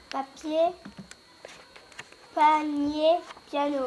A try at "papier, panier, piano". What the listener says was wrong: Piano. Piano. Ouvre bien ta bouche.